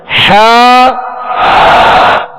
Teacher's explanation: حا وسط حلق سے، درمیان حلق سے